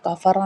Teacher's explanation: کافرہ میں باریک کاف ہے، را موٹا پڑا جائے گا